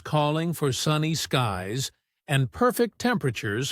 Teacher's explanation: voice naturally emphasized certain words like sunny and perfect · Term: stressed